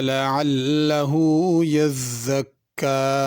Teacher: यज़्ज़क्का ज़ा है, इसको ज़ाल नहीं पढ़ना, और ज़ा के ऊपर भी शद है, आगे काफ के ऊपर भी शद है, तो इसको ख्याल करके दुरुस्त पढ़ना है।